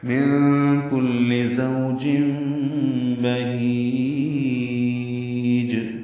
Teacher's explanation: تنوین کے بعد با آنے کی وجہ سے اقلاب ہو رہا ہے۔ بہیج میں ہا اقصی حلق سے نکالیں گے، لمبا کریں گے، جیم ساکن پہ قلقلہ کریں گے وقفاً۔